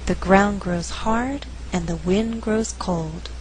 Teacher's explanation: in this faster reading only four content words are being stressed ground hard wind cold the resulting rhythm is 1 and 2 3 and four dun